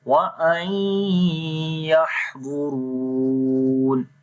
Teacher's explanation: Dwad and Ra we read in heavy sound and Ra we long due to Waw Madda.